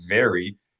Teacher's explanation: your lower lip and your front teeth are usually um contacting each other when you say English V, but it's going to be a different sound if you're using only your lips to say V.